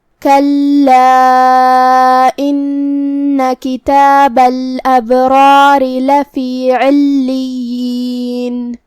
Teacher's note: کلا ان کتاب الابرار لفی علیین. کلمت کلا میں لام پہ تشدید ہے تو 2 حرف کے برابر ہمیں لام کو پڑھنا ہے، کیونکہ تشدید کی اصلیت 2 حرف ہوتی ہے.